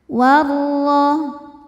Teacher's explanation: Ro dibaca tafkhim karena berharokat fathah maka ro-nya tebal. · Cara bacanya alif lam lewatin masuk langsung ke ro. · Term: alif lam syamsiyah